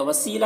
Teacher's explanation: وسیلہ یہاں پر یا مدہ ہے، اسے 1 الف کے برابر کھینچیں گے